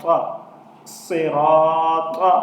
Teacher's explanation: تا، یہ بھی حروف مستعلیہ ہے تو اس کو بھی پر پڑھا جائے گا